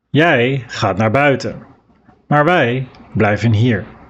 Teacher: Here you emphasize the words, jij, wij. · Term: stressed